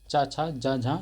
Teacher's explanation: ये स्पर्शी संघर्षी व्यंजन के उदाहरण हैं